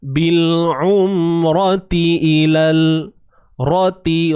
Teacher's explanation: ra baris atas, ra bersifat tebal sebab dia berbaris atas